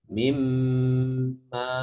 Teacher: Ini juga nun udah enggak dianggap, namanya idgham kamil. Idgham yang sempurna, benar-benar pindah ke mim.